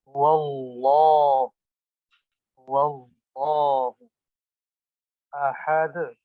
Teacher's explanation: دال میں قلقلہ کریں گے، دال میں قلقلہ کریں گے، ہلا کر پڑھیں گے. دال آئی ہے، وقف کر رہے ہیں.